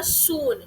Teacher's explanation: ठीक है, rounded close हो गए जब मैंने बोला सून, सून में मेरे होठ बंद होके छोटा सर्कल बना रहे हैं।